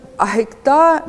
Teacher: ahi, this is diphthong with aspirated phonation